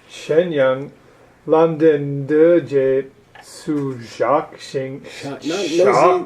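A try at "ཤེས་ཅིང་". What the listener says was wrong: No Z, just a low tone S.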